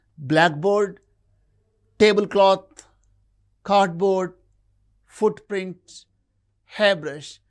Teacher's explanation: Mostly the first element in the compound word receives the primary stress.